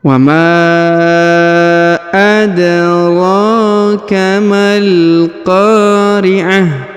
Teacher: Huruf ta marbuthahnya berubah menjadi ha sukun